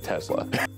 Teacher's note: He says it the way I say it, with the Z sound.